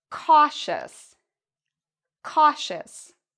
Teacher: We pronounce the ious like shus.